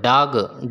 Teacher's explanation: a voiced alveolar and plosive sound